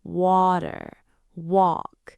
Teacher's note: for the W sound, like in water or walk, you have to round your lips.